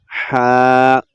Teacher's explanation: یہ حلق کے درمیان والے حصے سے ادا ہوتا ہے